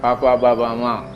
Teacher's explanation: ಪ ಅಂತ ಹೇಳುವಾಗ ಓಷ್ಟ್ಯ ಅಂತ, ಇದು ಎರಡು ತುಟಿಗಳು ತಾಗ್ತದೆ